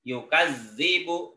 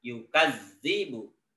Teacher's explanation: ini huruf zalnya ada tasydidnya, maka wajib dibaca double dan tidak ditahan.